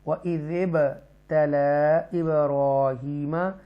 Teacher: با ساکنہ ہے تو حروف قلقلہ ہے، قلقلہ میں سے ہے تو یہاں پر بھی ایکو ساؤنڈ آئے گا، جنبش کے ساتھ پڑھیں گے